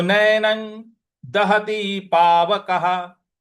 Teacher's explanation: न के ऊपर जो अनुस्वार है उसका उच्चारण भी हमको न ही ले आना है